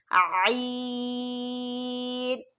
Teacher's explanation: حلق کا جو درمیانی حصہ ہے وہاں پر آپ زور لگائیں گے تو عین ادا ہوگا